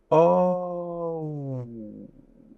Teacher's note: You hear the oo and the O. There's 2 sounds.